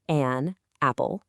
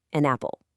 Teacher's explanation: Instead of saying an apple, with that little stop in the middle, a native speaker will naturally link them. The N sound at the end of an just slides right over to the A in apple. So it sounds like an apple. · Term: connecting words